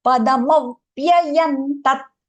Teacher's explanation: So that we have to give it like a push for that ma, padamau, and then vyayan. So what happens? The v sound doubles up. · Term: aghata